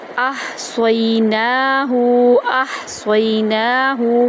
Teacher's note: حمزہ کو ہا کے اندر داخل کرتے ہوئے وسط حلق سے ادا کریں گے